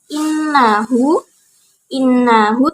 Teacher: innahu termasuk gunnah karena nun bertasjid, jadi dibaca dengung